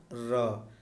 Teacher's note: जिन व्यंजनों के उच्चारण में जिह्वा को 2-3 बार कंपन करना पड़ता है वे प्रकंपित वर्ण कहलाते हैं